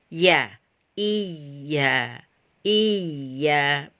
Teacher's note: sama-sama keluar dari lisan bagian tengah. Tetapi jika kita menyebut atau melafazkan mahroj atau huruf ya, itu tidak sampai lengket pada atau melekat pada langit-langit bagian tengah. Dia agak jauh.